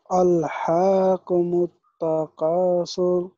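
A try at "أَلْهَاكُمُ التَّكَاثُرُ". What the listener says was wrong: اچھا، ہا کو ہا کی آواز نکالنا، ہا کی آواز نہ نکلے۔ ہا ذرا سینے کی طرف سے، جس طرح ہائے کہتے ہیں نا ہم ہائے، تو اس طرح ہا کی آواز نکالیں۔ الہاکم التکاثر،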